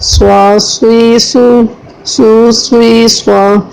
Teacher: صاد کو تینوں صورتوں میں پور پڑھنا ہے، چاہے کہ اس کے اوپر زبر ہو، زیر ہو یا پیش ہو، کیونکہ صاد کی صحت میں پور ہونا ہے۔